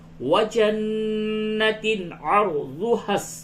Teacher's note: عر میں را کو پر کیجئے، را ساکن سے قبل زبر ہے، اس را کو پر کر کے پڑھیں گے۔